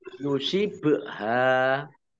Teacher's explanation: Yusibha ba sukun bacaan kolkolah dibaca pematul. Hak fathah alif mat tobi'i, wawu fathah alif mat tobi'i panjang 2 harokat.